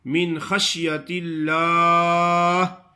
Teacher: لام کو باریک پڑھنا ہے اور آخر میں ہا ساکن پڑھنی ہے